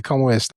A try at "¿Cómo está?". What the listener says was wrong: ¿Cómo está? See, you saying you're pronouncing your second O more of like a U. Say round your O a little bit. Cómo está?